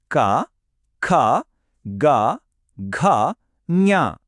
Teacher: ఈ సౌండ్స్ అన్ని మన గొంతు లోపలి భాగం నుంచి పుడతాయి. అవే క వర్గం అక్షరాలు. · రైట్, మన టూర్లో ఫస్ట్ స్టాప్ కంఠ్యం, అంటే మన గొంతు అన్నమాట. ఈ సౌండ్స్ అన్నీ మన గొంతు లోపలి భాగం నుంచి పుడతాయి.